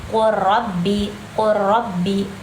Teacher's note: Jadinya si lam ini sepertinya seperti melebur dengan si ro tersebut.